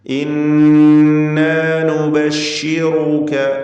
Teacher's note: ശ്രദ്ധ നൽകപ്പെട്ട നൂൻ 2 ഹറക്കത്തിൻ്റെ അളവിൽ ഗുന്ന നൽകണം